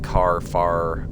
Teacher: We don't sound any final R in our words like car, far, etc. Phonetically, our common pronunciation is indistinguishable from CAA, FAA.